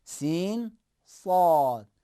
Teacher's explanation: اب سین اور صاد ہے، اب اسی سین کو موٹا کریں گے، سین پلس تفخیم، بھاری آواز کو جمع کریں گے تو حرف صاد بن جائے گا